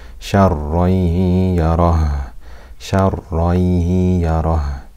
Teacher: We completely merge the tanween into the ya with ghunna for two harakat.